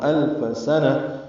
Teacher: سین کو جلدی پڑھیں گے، صفیر کی آواز سے